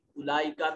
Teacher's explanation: उलाइका में ये बड़ी मद है, 3 से 4 अलिफ के बराबर लंबा कीजिए